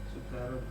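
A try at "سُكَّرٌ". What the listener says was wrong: Ya, kaknya pakai tasydid. Sukkarun.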